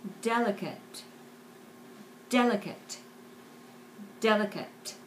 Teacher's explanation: there is a very strong accent on the first syllable